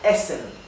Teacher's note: Esto se pronuncia essen. La primera E es bien corta.